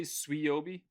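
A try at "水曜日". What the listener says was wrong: No, it's not like a swa. It's su. Isn't there like Arkansas's football team goes Sui or something like that? It's kind of like that. Suyobi.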